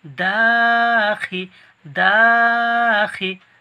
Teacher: দা টান হবে, খি টান হবে না